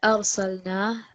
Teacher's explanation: Yeah, so the incorrect letter read here, arsalna, and we want to make that thick because it's a ra sakin, which is preceded by the fatha